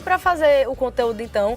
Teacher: Também o R cortado dos verbos, né? Terminados em R.